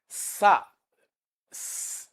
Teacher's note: is a voiceless alveolar fricative